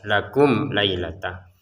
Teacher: mim sukunnya bertemu lam, jadi kita bacanya jelas